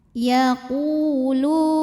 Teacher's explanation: Karena waw sukun didahului baris dhammah, maka qaf panjang 2 harokat. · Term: matabi'i